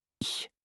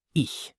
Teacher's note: It's like the sound in the Scottish word lach. Not a hard K, not a hard C. A soft, breathy ch. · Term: the ch sound